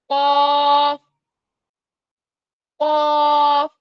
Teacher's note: आवाज को मोटा करने के लिए हम अपने होठों को गोल करेंगे। जब हम अपने होठों को गोल करते हैं तो हमारे होठों के किनारे आपस में मिल जाते हैं और बीच वाला हिस्सा हमारा गोल हो जाता है।